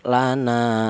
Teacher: Ini juga sama ada alif didahului huruf yang berharakat fathah dibaca mad thaobi'i. Alasannya ada alif didahului huruf yang berharakat fathah panjangnya yaitu satu alif atau dua harakat atau dua ketukan · Panjangnya yaitu 1 alif atau 2 harokat atau 2 ketukan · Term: matobi